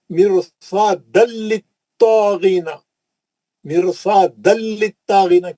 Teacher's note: تنوین کا ادغام بلا غنہ حرف لام